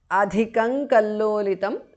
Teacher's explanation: Adhikam kallolitam because of sandhi. Anuswara changes to nga there.